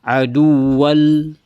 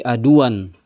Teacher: Tanwin di sini langsung loncat ke huruf lam. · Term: idgham bila gunnah